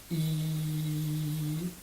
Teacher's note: on sent que c'est dans le palais, qu'il y a une contraction de la langue et que c'est bien à l'intérieur finalement.